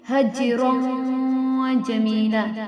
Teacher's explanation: حج، جیم حروف قلقلہ میں سے ہیں تو حج رو جمینا، را کو پر پڑھیں گے، آگے جیم جو ہے حروف اخفا میں سے ہیں، نون کی آواز کو ناک میں چھپا دیں گے